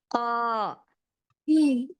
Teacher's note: जबान की जड़ जब नरम तालू से लगती है तो कफ अदा होता है